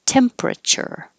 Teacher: You don't have to say temperature. You can make it shorter and 3 syllables.